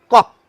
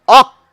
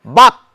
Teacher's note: উপরের পিছনের তালু এবং জীভের পিছনের অংশ ওই যেখানে উপরে গিয়ে আটকে থাকছে সেটাকে বলা হয় পশ্চাৎ তালু বা নরম তালু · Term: কণ্ঠধ্বনি